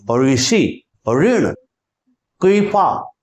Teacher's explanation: ऋ का जो शुद्ध उच्चारण था उसमें जीभ को स्पर्श नहीं करना था